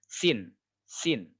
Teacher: membunyikan sin kecil antara gigi depan, atas dan bawah itu bersentuhan